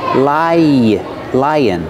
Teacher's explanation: When we link to the second vowel, which is like cup and up, lie, lie, lion. We have a sound in the middle that links the sounds. Yeah, like yellow in yesterday.